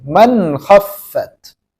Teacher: नून साकिन को जाहिर करके साफ साफ पढ़ेंगे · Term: इजहारे हकीकी